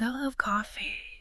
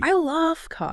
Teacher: if you stress coffee I love coffee you're talking about the drink